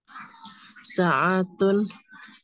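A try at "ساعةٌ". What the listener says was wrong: Sa'atun. Jadi sa-nya yang panjang.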